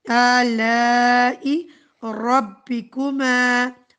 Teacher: را پھر پر پڑھا جائے گا، اور ما تھوڑا سا اسٹریچ کیا جائے گا